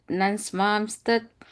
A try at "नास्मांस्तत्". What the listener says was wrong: And then the next word right after that is Nasmams. That you said na, it's na sound.